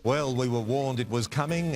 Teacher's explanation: intonation and then the second part on the falling intonation the first part which ends on a rising intonation lets the other person know that we're not finished speaking yet well we were warned it was coming and it delivered a